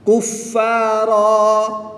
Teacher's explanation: 2 زبر کی تنوین کو وقف میں الف مدہ سے بدل دیں گے